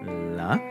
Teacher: It's dental. It's voiced. It's unaspirated.